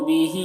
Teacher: بہی میں ہا کے نیچے کھڑا زیر ہے جو یا مدہ کی طرح ہے، اسے ایک الف کے برابر کھینچیں گے